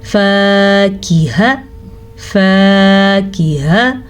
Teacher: फ़ा ज़बर अलिफ फ़ा, ये लंबा होगा लेकिन काफ हा लंबे नहीं होंगे क्योंकि काफ ज़ेर की, हा ज़बर हा।